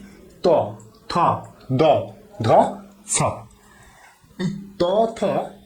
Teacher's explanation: এগুলো উচ্চারণ করার সময় দেখো যে আমাদের জিহবা প্রান্ত একদম দাঁতে গিয়ে শ্বাসবায়ুকে আটকে দিচ্ছে